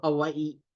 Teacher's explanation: And in Hawaiian, we have a letter that is called the okina or the glottal stop that basically, makes you stop your word, your sound, and then continue it. So Hawaii, there's kind of another little E there afterwards.